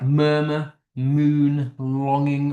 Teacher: the air kind of moves through your nose when you say them. Hence why they're called nasal. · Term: nasals